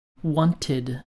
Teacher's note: some past tense regular verbs end with the ID sound